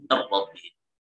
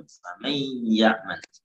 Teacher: idgham naqis yang ada sisa gunnah di nun